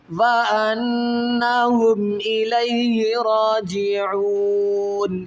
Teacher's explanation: میم ساکن کے بعد کیا ہے کہ نہ تو با ہے اور نہ ہی میم ہے، تو یہاں پر اظہار کریں گے، غنہ نہیں کریں گے